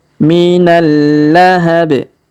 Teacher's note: Huruf B di ujung kita sukunkan sehingga kita pantulkan ya, karena kita berhenti di sini.